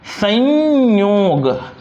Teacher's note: य व्यंजन से पहले जो अनुस्वार का उच्चारण होता है वो य जैसा होता है